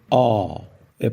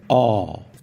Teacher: Parece um A, mas mais fechado, então fica ó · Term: pronúncia curta